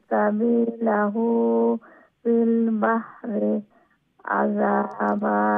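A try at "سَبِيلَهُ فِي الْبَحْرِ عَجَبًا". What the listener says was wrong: হ্যাঁ, ঠিক আছে, মাশাআল্লাহ, অনেক সুন্দর হয়েছে,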